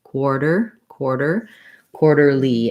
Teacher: That ER is the sound. First syllable stress though, so that second is kind of shorter. · And then my TER, this T is a flap, so it sounds like a light D. That ER is the sound.